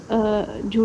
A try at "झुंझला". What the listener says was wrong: झुंझला actually बड़े ऊ की मात्रा नहीं है, छोटे ऊ की मात्रा है, तो इसको जल्दी से जैसे अगर झुंझला, झुंझला। हाँ, झुंझला मतलब ज्यादा इस पे रुको मत, ये जो है ना ऊ की मात्रा है तो रुकना नहीं है।